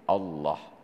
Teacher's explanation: padahal Allah itu dia harus tafkhim dibaca harus ada bunyi o-nya